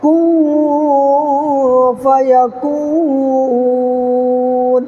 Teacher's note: یہاں پر نون کے بعد کو ناک میں چھپانا ہے